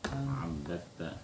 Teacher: Dal ketemu tak. Kada dibaca abadata. Tapi dibaca abbatta. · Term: idgham